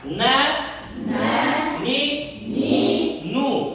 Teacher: tilning uchi yuqori old tishlarning milkiga tegib, bunga dimog'dan chiqadigan g'unna qo'shiladi. Ya'ni burundan chiqadigan tovush qo'shiladi.